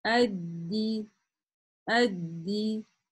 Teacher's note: Адди, адди, ну, еще долго мы не дошли. Значит, фиксируем на даль, где она с суккуном, и затем говорим даль с касрой